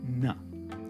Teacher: take the tongue and stick it right on the teeth now don't be shy about sticking out your tongue that'll make sure that the sound is a pure dental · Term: dentals